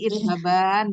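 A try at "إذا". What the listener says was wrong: Nah, ini nunnya itu, maaf ya, Bu, maaf, Ibu. Nunnya itu dihilangkan ya, Bu ya. idhaba. Nunnya enggak ada lagi.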